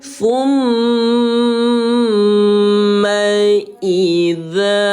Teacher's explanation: Mad 4 dibaca panjang 4 ketukan.